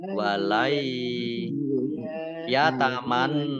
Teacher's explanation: nun sukun bertemu dengan huruf ya Idgham Bighunnah masuk dengan mendengung ia ya ditandai yaknya ada tasydidnya yakni dibaca dobel walai ya